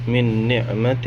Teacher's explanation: نون ساکن ہے، اس کے بعد نون آ رہا ہے، یہاں پہ بھی ادغام مع الغنہ ہوگا